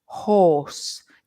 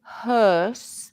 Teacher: for horse my lips are pointed horse and they're rounded but hearse they are a bit more Square